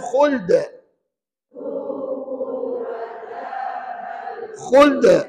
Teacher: hukumnya Qalqalah kubra mesti kedengaran lantunannya dengan kadar yang kuat